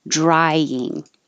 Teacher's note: drying is the eye your tongue has to start very low and your jaw open i and rise